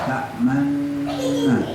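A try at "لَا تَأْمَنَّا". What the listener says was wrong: Oh, belum. Harus, Pak, harus itu. Harus ya. Nah, ini harus monyong, jangan malah mingkem. Ayo ulangi. Manna.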